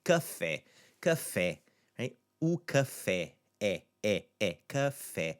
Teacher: And in all of these, we have a multi-syllable word in café, two letters, two syllables, I should say. It's the second syllable that's the accentuated one. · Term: accentuated, stressed syllable